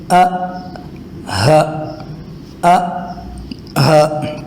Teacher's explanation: یہ دونوں حرف ادا ہوتے ہیں گلے کے آخری حصے سے، یعنی جو سینے کے قریب والا حصہ ہے وہاں سے یہ دونوں نکلتے ہیں